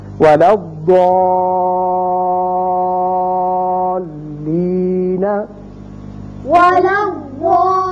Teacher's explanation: اسی طرح یہاں دیکھیے ضاد زبر الف مدہ ہے، آگے لام مشدد ہے، یہاں شد کی وجہ سے پہلے الف معروف ہے تو یہاں مد ہوگا 6 حرکات کے برابر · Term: مد لازم